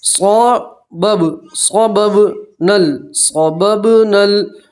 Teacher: نون کو سیدھا لام سے ملائیں گے